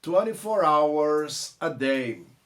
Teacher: O S do hours, ao juntar com A, vai virar som de Z